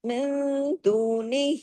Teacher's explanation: نون ساکن کے بعد دال آیا، اخفا ہوا.